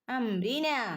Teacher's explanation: അംരിന 2 അനക്കം നീട്ടി ഓതണേ. അലിഫ് മദ് വന്നിട്ടുണ്ട്.